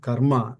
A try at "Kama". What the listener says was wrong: Kama, not karma, kama.